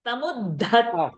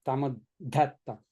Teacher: Dha is Mahaprana and ta is Alpaprana.